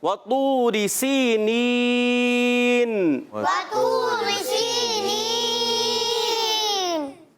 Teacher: آخر میں نون کی ادائیگی کلیئر ہونی چاہیے. نون ساکن رہے, ہلے بھی نہیں. بعض کیا کرتے تھے سینین, آواز آ جاتی ہے نون کلکلا والی, کلکلا نہیں کرنا.